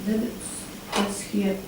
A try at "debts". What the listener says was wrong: Just that word debt, the B is silent. No, you're saying the B there.